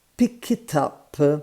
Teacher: the CK and the I connect, and then the T and the U connect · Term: linking